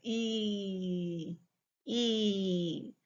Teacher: But for the long E, your lips are really spread like a smile.